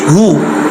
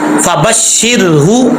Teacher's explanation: अब हा को लंबा नहीं करना, हा पेश हु, बस इतना इसका साउंड आएगा